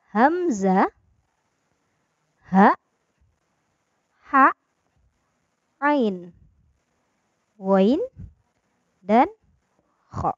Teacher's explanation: keenam huruf ini adalah huruf halqi karena huruf yang keluar dari tenggorokan atau kerongkongan